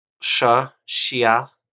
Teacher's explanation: it's like sh but like a y at the end